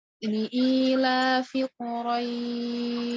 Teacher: Jadi mat layin tadi apabila ada huruf mat tabi'i, alif, ya, atau waw, sebelumnya ada huruf yang berharokat fathah. Di sini rohnya fathah, setelahnya tanda mat, yaitu ya. Maka dibacanya 2, 4, atau 6 harokat. Biasanya kalau di akhir ayat itu makanya 4 atau 6, jarang yang pakai 2.